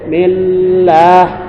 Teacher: lam lidahnya naik ditahan karena bertasdid ditahan satu huruf